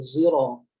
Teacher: contohnya kalimah sirat dia tak boleh baca sad, dibaca dengan zai.